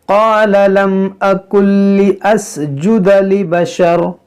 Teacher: نون ساکن کے بعد لام ہے، یہاں پر بھی ادغام ہوگا